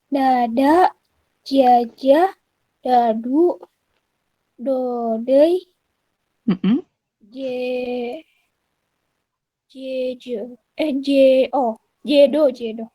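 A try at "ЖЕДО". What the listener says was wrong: Iya, jedo. Betul, jedo.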